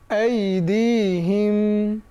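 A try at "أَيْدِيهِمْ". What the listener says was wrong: না, হিম তো টান নাই।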